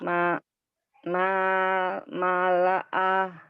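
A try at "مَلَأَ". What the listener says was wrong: Bukan ma'a, ini lam. Malaha.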